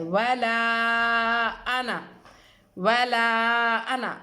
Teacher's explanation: ولا ایک کلمہ ہے اور انا جو ہے وہ دوسرا کلمہ ہے، اس لیے یہ مد بھی مد منفصل ہے اور اس کو بھی 3 سے 4 الف کھینچنا ہے